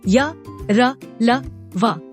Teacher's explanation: जिन व्यंजनों के उच्चारण में मुंह के किसी भाग से जीभ पूरी तरह से स्पर्श नहीं हो पाती है या जीभ बहुत ही हल्का सा स्पर्श करती है उन्हें अंतस्थ व्यंजन कहते हैं।